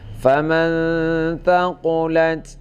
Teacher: padahal sa-nya tidak panjang, sa tidak panjang, tapi dibaca panjang